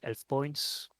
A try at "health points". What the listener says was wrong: I have to say this, but your accent makes it sound like you're saying elf points. It is health points, but my brain autocorrects it to elf points, like elves.